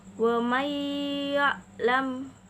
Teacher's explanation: Contohnya ada wa may ya'lam. Di situ ada nun sukun bertemu dengan ya, jadi harus mendengung. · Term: idgham bi gunnah